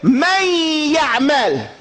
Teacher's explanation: You entered the noon into the ya. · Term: idgham